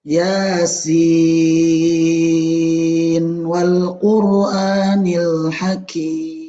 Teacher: Kalau disambung harusnya kan idgham. Namun yang benar bukan idgham. Yang benar adalah izhar.